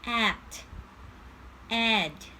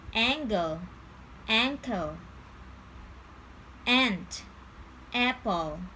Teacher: a very open vowel sound so your jaw should be very low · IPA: æ